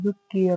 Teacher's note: را کے اوپر زبر ہے تو را کو پر ادا کیا جائے۔